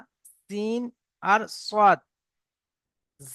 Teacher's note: উপরের দুই দাঁত এবং সেই সোজাসুজি নিচের দুই দাঁত উপরের এবং নিচের দুই দাঁতের আগার সঙ্গে লাগিয়ে উচ্চারিত হয়